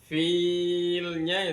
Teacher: mat aridi lisukun, dibaca 5 harokat